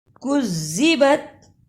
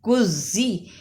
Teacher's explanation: کاف کو زال سے ملانا ہے اس لیے کہ زال پر شد ہے